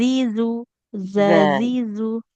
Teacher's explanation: jadi ujung lidahnya pastikan menempel ke ujung gigi seri yang atas. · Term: huruf zalnya